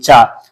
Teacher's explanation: जब तक आपकी जो जिह्वा है आपके तालु को स्पर्श नहीं करेगी तब तक आप चा नहीं बोल सकते।